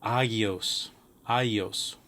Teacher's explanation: Gamma. The gamma is a GH kind of sound, although before certain vowels it may have more of a softer sound, as in yet.